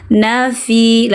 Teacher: Labina fi seharusnya tidak panjang, na tidak memiliki alif